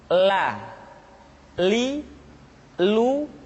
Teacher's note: huruf la diucapkan dengan mengangkat ujung lidah kita dengan disentuhkan dengan langit-langit di depan